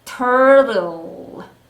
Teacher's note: 강세를 앞에 tur에다가 힘을 주시고 뒤에 있는 T는 약하게 turtle 하시면 되겠습니다.